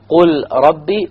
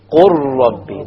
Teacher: The lam is completely dropped because you merge the ra with the qaf. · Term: idgham